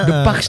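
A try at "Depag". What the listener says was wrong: Depak. Enggak Depak, pakai G dong, Depak.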